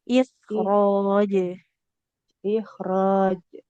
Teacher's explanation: Nah, huruf jim itu enggak boleh r. Nah, enggak boleh ada hembusan nafasnya.